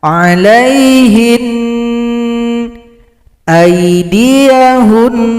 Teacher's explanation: Kalau berhenti pada huruf nun tasydid maka nunnya disukunkan, bunyi dengungan kita lanjutkan 2 ketukan